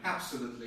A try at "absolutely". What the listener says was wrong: I'm afraid this is not correct. I would say that the main stress comes on the third syllable. Absolutely. Absolutely. If this word works on its own, the main stress comes on the third syllable. Absolutely. Absolutely.